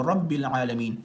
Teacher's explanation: که را باندې زبر راغلی وي نو رب العالمین دا را چې کوم دی نو دا به پور ویل کېږي